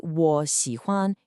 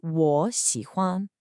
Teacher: First, that third tone rule. When you have two third tones in a row, like in 我喜欢, the first one changes to a rising second tone.